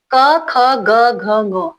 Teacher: क वर्ग के जितने भी वर्ण है ये सारे आते हैं आपके कंठ में